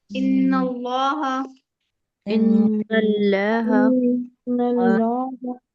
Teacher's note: جیسے نون پہ تشدید ہے تو پہلے غنہ کریں گی پھر پڑھیں گے